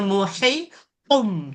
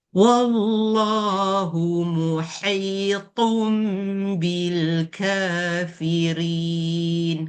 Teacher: Jumpa to tu nak kena tebal bunyi tum tu. Jangan muhitum.